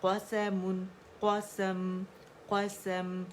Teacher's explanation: میم کی آواز میں توسط تھا, اظہار ہم نے اس کا کیا ہے تو آواز تھوڑی سی چلیے ایک کاؤنٹ کے لیے ٹھیک ہے.